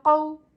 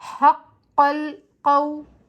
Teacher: قاف کے اوپر زبر ہے، زبر کو ہم بغیر کھینچے بغیر جھٹکا دیے معروف و متوسط طریقے سے پڑھتے، لیکن آگے واو ساکن اس سے پہلے زبر واؤلین کہلاتا ہے، اور واؤلین کو ہم 1.5 حرکت کی مقدار دیر لگا کر نرمی اور جلدی کے ساتھ پڑھتے ہیں